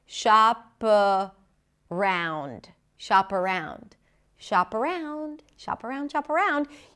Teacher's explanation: the p becomes the beginning of the next word and you know why because the next word starts with a vowel and the phrase is always pronounced as if it's one sound shop.